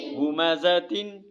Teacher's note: یہاں غنہ نہیں ہوگا کیونکہ آگے حروف حلقی کے 6 حرفوں میں سے ہا آ رہا ہے